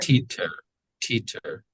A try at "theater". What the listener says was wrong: So it's going to be the TH, the unvoiced TH. Theater.